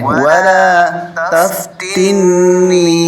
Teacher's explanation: نون مشدد ہمیشہ غنہ ہوتا ہے، تو یہاں میں غنہ کرنا